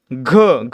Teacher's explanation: घ मध्ये ह चा उच्चार होतोय घ देखील महाप्राण